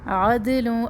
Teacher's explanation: اب دال کو ہلانا ہے, دال کے اوپر قلقلہ کریں